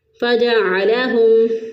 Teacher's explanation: عین کو وسط حلق سے اور ہا کو اقصی حلق سے ادا کریں گے، یعنی گلے کا وہ حصہ جو سینے کی طرف ہوتا ہے وہاں سے ہا ادا ہوگا۔